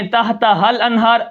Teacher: تحتہا الانہار، الف بیچ میں غائب ہو گیا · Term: الف غائب